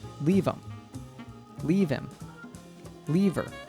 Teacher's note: Instead of saying leave them, the TH in them falls away and what we hear is leave 'em. This often happens to the pronoun them. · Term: reduction